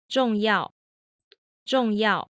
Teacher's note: the first fourth tone only goes about halfway down, like we saw with 4-1 and 4-2. · The second fourth tone starts a little bit lower than the first fourth does, and then it goes all the way down. So the first one goes only about halfway down. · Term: 4-4 combination